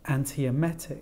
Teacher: the stress actually falls on the first syllable antiemetic Okay so we've got five syllables in this word the stress falls on the fourth syllable